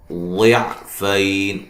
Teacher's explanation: ضاد کو موٹا ادا کریں گے، اس کے مخرج سے نکالیں گے ، فی یا لین ہے، اور جب وقف کریں گے تو